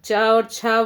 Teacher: च और छ का उच्चारण स्थान है तालू